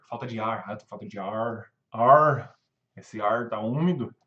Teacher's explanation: É toda hora o R, que a gente chama de retroflexo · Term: R do interior